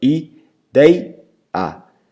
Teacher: Dei, que é a sílaba que permanece no meio da palavra, que é a penúltima, é a mais forte. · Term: paroxítonas